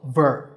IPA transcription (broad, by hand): vɜː